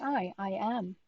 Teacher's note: and it's like the english i i am therefore i think it is the sound of ah going to e i you say it quickly